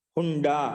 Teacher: టవర్గం యొక్క అక్షరం ఉంది కాబట్టి పంచమాక్షరం వస్తుంది